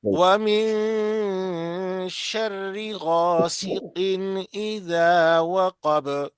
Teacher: वक्फ की हालत में बा पर सुकून आ जाएगा, जब सुकून आ जाएगा तो बा पे कलकला होगा।